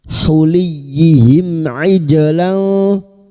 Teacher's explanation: Mim sukun bertemu ain idhar syafawi. Mim sukun dibaca jelas tanpa mendengung. Huliyihim ijlan ij huruf ain ij jim sukun yang mati asli di tengah kalimat qalqalah sugro. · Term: idhar safawi